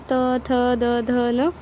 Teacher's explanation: वयम दंतानी, हम जब भी हम लोग त थ बोलते हैं तो वो जाके दांत को स्पर्श होता है, अपना जुबान दांत पे स्पर्श होता है, तब त थ की आवाज़ आती है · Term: दंत्या